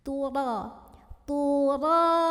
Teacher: Bagaimana cara menebalkan huruf ra ini? Dengan cara mengangkat pangkal lidah bagian paling belakang dari lidah kita tanpa mengubah makhrajnya. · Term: tafkhim